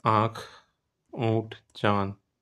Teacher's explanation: अनुनासिक स्वर ध्वनियां वे ध्वनियां होती है जिनका उच्चारण मुख और नाक की सहायता से किया जाता है। ठीक है? इनका प्रयोग स्वर के बाद किया जाता है।